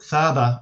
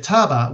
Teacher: in Aramaic, the tha always becomes a ta. So it has borrowed this word with a T, and it has a very specific religious vocabulary, right?